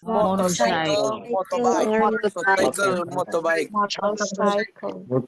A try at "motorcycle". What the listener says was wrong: Lebih oke lagi kalau R-nya nggak usah dibaca. Jadi R-nya nggak usah dibaca, nggak masalah ya. Motorcycle, motorbike, sepeda motor.